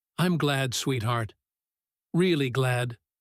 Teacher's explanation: The second glad carrying noticeably more weight and warmth than the first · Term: repetition with added stress, added stress